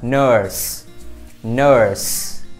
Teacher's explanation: Đối với âm này các bạn sẽ đọc giống như chữ ơ Việt Nam và các bạn sẽ ngân ra một chút xíu